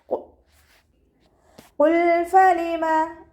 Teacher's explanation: ഫ ലൈറ്റ് ആക്കിയിട്ട് ഉച്ചരിക്കുക. നമ്മുടെ മേലെ മുൻപല്ലിൻ്റെ അറ്റം താഴെ ചുണ്ടിൻ്റെ ഉൾവശത്ത് നനഞ്ഞ ഭാഗത്താണ് വെക്കേണ്ടത്